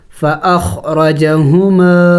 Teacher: تو یہاں پہ حروف قلقلہ نہیں ہے تو ہم نے اس کو جم کر کے پڑھنا ہوگا، خا ساکن ہے، فأخ، را زبر را، دیکھیں را موٹے حروف میں سے ہے، موٹا پڑھیں گے، فأخر، جیم زبر جا، فأخرج، ہا پیش ہو، میم الف زبر ما، فأخرجہما، دیکھیں ہما میم کو ایک الف کے مقدار کھینچیں گے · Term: الف مد